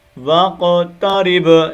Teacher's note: با کلکلا ہوگا آخر میں